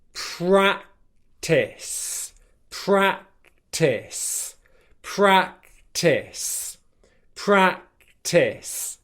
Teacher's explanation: s at the end is nice and soft there's no K sound there